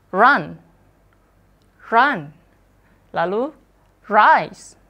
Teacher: kalau R-nya dia berada di depan, R-nya nanti akan dibaca rhotic